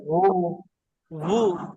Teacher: হ্যাঁ, ওয়াও এরপরে ওয়ের উপরে পেশ ওয়াও পেশ পেশ পেশ ভু উচ্চারণ করতেও গোল হয়, তাহলে ওয়াও গোল পেশও গোল, মানে এখানে সম্পূর্ণই ঠোঁট গোল হবে